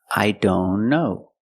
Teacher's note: link the N with the other N